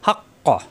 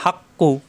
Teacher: কফ সাকিন হয়ে যাবে, হাক ক, তখন ধাক্কা হবে, বাড়ি খাবে। আল হাক ক অক্ষ করলে, মিলিয়ে পড়লে হাক কু এভাবে পড়তে হবে।